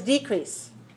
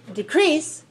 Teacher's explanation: first syllable for the noun and second syllable for the verb.